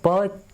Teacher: प के उच्चारण में क्या होता है, होठों के पास से वायु का अवरोध होता है, ठीक है। आप बिना होठ बंद करे आप प नहीं बोल सकते हो।